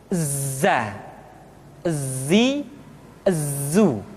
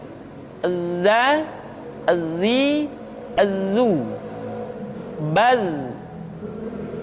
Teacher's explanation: ketika kita mengucapkan huruf za, suara kita mengalir, akan tetapi nafas tidak boleh mengalir. Contoh yang salah seperti ini, za, zi, zu. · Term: al-jahr